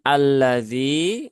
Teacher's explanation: tidak dibaca kemudian alladzi ya dalalnya dia dibaca Dua harakat ya Ada Ya Sukun setelah kasrah sehingga dia cukup dibaca dengan kadar dua harakat